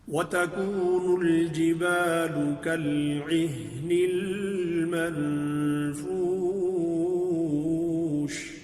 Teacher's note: फूश शीन में तफशी हमने पढ़ा, इफ्शा होगा, इसमें आवाज़ फैल जाएगी